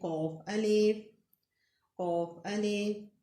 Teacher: आपकी ज़ुबान की जड़ कव्वे के ऊपर ताल्लुक के नरम हिस्से पे लगे